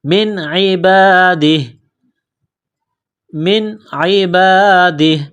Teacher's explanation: نون ساکن پر غنہ نہیں کریں گے، آواز ناک میں نہیں چھپائیں گے. یہاں نون ساکن کے بعد عین ہے، حروف حلقی ہے، تو نون ساکن پر غنہ نہیں کریں گے.